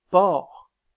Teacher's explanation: le O ouvert, comme dans porc